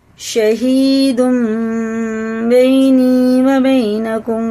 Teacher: اس میں اخفا اور غنہ دونوں کر کے پڑھنا ہے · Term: اقلاب کا قاعدہ